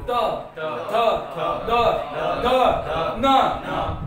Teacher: ज्या वर्णांचा उच्चार करताना दाताचा उपयोग होतो त्याला म्हणतात दंत वर्ण